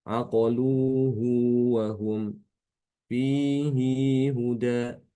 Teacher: Ya, jadi pada keadaan keempat inilah Imam Ibnu Katsir itu berbeda dengan yang lain, ya, punya ciri khas di sini, yaitu dengan di mana Imam Ibnu Katsir itu bacanya dengan memberikan silah pada haul kinayah